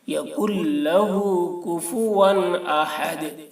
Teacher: نون کو نہیں پڑھیں گے، یکن لہ کاف کو لام کے ساتھ ملا کر، یکن لہ کفوا احد، ہا کو حلق سے ادا کریں گے، دال میں قلقلہ کریں گے، احد۔